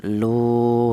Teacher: Adapun untuk panjangnya mad thobi'i yaitu satu alif atau dua harakat atau dua ketukan lu seperti itu.